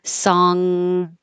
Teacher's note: when you make the NG the back of your tongue is going very high and touching the back of your mouth